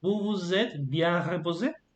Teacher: The first one, I say vous. I don't pronounce the S. But the second one, I do pronounce the S. Why? Because the next word starts with a vowel. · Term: liaison